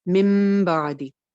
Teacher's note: सबसे पहले चेक करना है कि बा तो नहीं है। अगर नून के बाद बा आ जाता है तो सीधा सीधा नून की आवाज को मीम में चेंज करके पढ़ देते हैं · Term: इकलाब